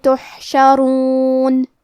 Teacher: حرف الحا کی ادائیگی حلق کے درمیان والے حصے سے ہے، اور کیونکہ اس پہ جزم ہے لہذا ہم حرف الحا کو ظاہر کریں گے۔